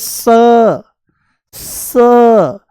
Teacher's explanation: ये दंत्य सकार है, दांतों से बोला जाता है।